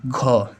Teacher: जैसे ही घ बोलेंगे वायु ज्यादा निकलेगी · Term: महाप्राण